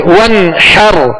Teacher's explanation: हा को वस्ते हल्क से अदा करेंगे